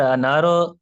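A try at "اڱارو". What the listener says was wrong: नारो नहीं है, नून नहीं नून नहीं है. नून नहीं, ये है. ये को नून से रिप्लेस ना करें. अंगारो, अंगारो बोले. अंगारो.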